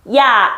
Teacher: 준비 동작은 이였는데 결과적으로 입 모양이 아가 됐단 말이야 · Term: 이중 모음, 이중모음